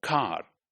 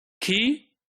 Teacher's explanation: But in car, it is towards the velar, right? So it is more velar, the k in car, than k in key